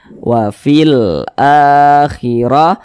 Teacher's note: huruf ro dibaca tebal karena dia memiliki harakat fathah